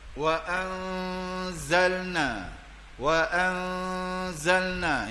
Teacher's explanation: Dia boleh dengung ni khaisum dipanggil. Gunnah ni dengung ni akan keluar angin ikut hidung, di khaisum.